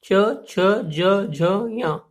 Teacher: चा वर्ग के जितने भी व्यंजन हैं, इनको उच्चारित करते समय हवा का प्रेशर पड़ता है तालु पर। तो ये सब हमारे कहलाएंगे तालव्य व्यंजन।